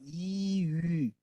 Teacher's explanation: 이 발음하는 상황에서 입술을 모으면 이위 이렇게 해서 위 발음이 나와요